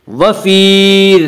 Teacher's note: वफ़ी ज़ालिका, वफ़ी या मद्दा वो या जो साकिन हो और इससे पहले ज़ेर हो, या मद्दा को 1 अलिफ के बराबर खींच कर पढ़ेंगे